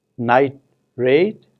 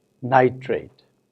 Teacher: transition from tur to ra in the middle of the word whereas in night raid there is a slight pause that you notice in nitrate there is no such pause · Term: open juncture